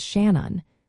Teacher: The River Shannon is pronounced as Shannon, with the emphasis on the first syllable. The first part, shan, rhymes with man, while the second syllable is a soft un, sounding like un.